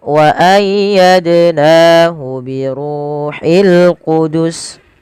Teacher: Dal sukun sebagaimana yang awal wajib dipantulkan karena ia bacaan qalqalah. Nahu mad tabi'i ada fathah bertemu alif.